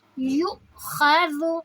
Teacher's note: گے، حمزہ پہ جزم ہے تو جھٹکا دیں گے، یو خذ، خا میں رگڑ کی آواز آئے گی ، وال نرمی سے، اور پھر اسی طرح صرف ایک سیکنڈ، · یا کے اوپر جب یا کو ہم حمزہ سے ملائیں گے، حمزہ پہ جزم ہے تو جھٹکا دیں گے ، یو خذ، خا میں رگڑ کی آواز آئے گی، وال